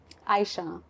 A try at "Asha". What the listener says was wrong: Asha. Like you go to the dentist. Asha, the I is silent. I know it looks like Aisha, favorite wife of Muhammad, but no, it's Asha.